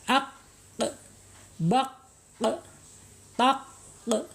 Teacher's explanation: asyidah ya jadi tertahannya suara ketika di diucapkan aqq baq taq Ya tertahan dia ya suaranya tertahan mempunyai sifat asyidah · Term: asyiddah